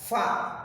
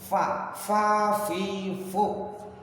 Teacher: cara praktek menyebut fa itu tempelkan gigi atas di bibir bawah.